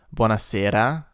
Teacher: This is a trilled R, which we don't have in English.